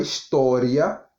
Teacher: na palavra história, nós demoramos mais tempo falando o A ou o I. Nós demoramos no A. Então, ela vai do menor para o maior. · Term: ditongo crescente